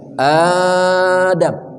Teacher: Badal artinya mengganti. Suara hamzah tersebut yang mati diganti dengan panjang.